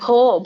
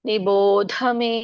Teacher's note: ಭೋಕೆ ಮಹಾಪ್ರಾಣ ಇಲ್ಲ, ಧಕ್ಕೆ ಮಾತ್ರ ಮಹಾಪ್ರಾಣ ಇರೋದು.